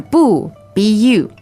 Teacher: a bu Buu it's actually neutral in this phrase